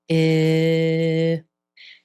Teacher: The mouth stays in one place as you pronounce this sound. No movement. The tongue is very relaxed. It's not pressed against the teeth or moving towards the roof of the mouth. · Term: silver pen vowel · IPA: /ɪ/